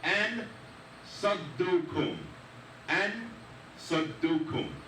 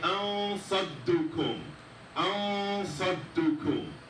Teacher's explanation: So you can kind of hear the noon sound, but it's not clear. That is the ikhfa.